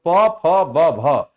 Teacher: ये दोनों ओठ हमारे सटते हैं, इसलिए जो भ आपका दिया हुआ है प फ ब भ, ये ओष्ठ व्यंजन माना जाता है